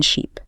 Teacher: And the long ease in sheep. >> It's held longer, more stretched out, more tension. >> That length difference is everything.